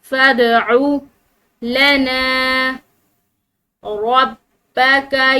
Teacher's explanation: دال یہ حروف قلقلہ میں سے ہے، ٹھیک ہے، اس کو ہلاتے ہوئے پڑھیں گے